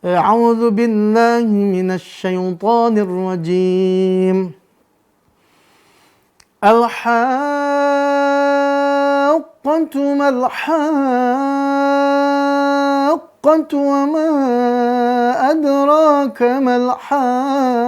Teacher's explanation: Maka kalau tadi tuh yang sebelumnya al-haqqatu, maka qafnya sifat dominannya isti'la atau terangkat pangkal lidahnya, maka dibunyikan juga terangkat pangkal lidahnya. Jadi bunyinya tebal.